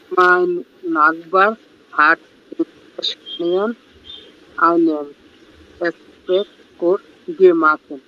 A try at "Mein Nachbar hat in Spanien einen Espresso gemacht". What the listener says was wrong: Gut, schön, sehr gut.